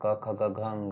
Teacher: क वर्ग का जो उच्चारण स्थान है कंठ